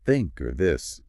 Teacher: where the tongue kind of pokes out slightly between the teeth. That's physically unfamiliar.